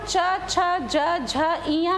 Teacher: लेकिन अगर हम वर्ण का उच्चारण करते हैं तो सबसे पहले कंठ का उच्चारण होता है तो कंठव्य और वर्ग का नाम क वर्ग कहलाता है। जब हम च छ ज झ इया कहते हैं तो जिह्वा तालु को स्पर्श करती, पैलेटल है ना, मतलब मूंछ के नीचे के हिस्सा को स्पर्श करती है तो इसे हम तालव्य कहते हैं और इसमें हम च वर्ग के नाम से पुकारते हैं।